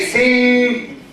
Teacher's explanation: So the air comes out of the nose. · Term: nasal N